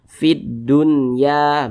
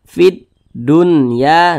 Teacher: syamsiyah alif lam syamsiah biasa disebut juga dengan qam Syamsiah karena cara membaca huruf lamnya ini dibaca idgham Jadi huruf lamnya ini tidak dibaca dia langsung masuk ke huruf yang di depannya · huruf lamnya ini tidak dibaca dia langsung masuk ke huruf yang di depannya. Maka dibaca fid dunya begitu. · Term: alif lam syamsiyah